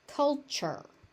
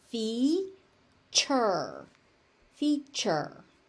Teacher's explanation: So, you see a tu there and for some reason it becomes ch.